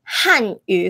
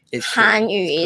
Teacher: 汉语 fourth tone 汉语 is Mandarin. 韩 second 韩语 is Korean.